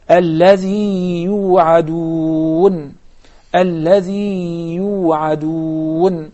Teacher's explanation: Then, the next set is when the first ya is a ya maddiya, followed by another ya, with whatever vowel, it doesn't matter. Then we have to prolong the first ya in order to explain that there are two separate ya's.